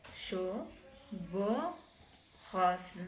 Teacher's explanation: Ces combinaisons de voyelles produisent le son E, mi fermé, oral arrondi.